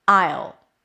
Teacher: Will becomes ul. So it's a schwa and a dark L. Make sure you kind of like create some tension here in the back.